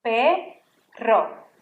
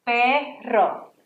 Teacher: when you have two R's, that R has to really sound R. You really have to roll that R. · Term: double R